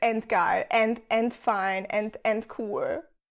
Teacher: Pairs of voiced and voiceless plosives, like d and t, are often confused by native speakers of German when they come at the end of a word or a syllable, since they're all pronounced as the voiceless versions anyway. So a D at the end of a word or a syllable would usually be pronounced as a T.